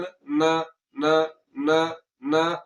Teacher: आवाज को नाक में ले जाकर फौरन छोड़ दिया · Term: गुन्ना असली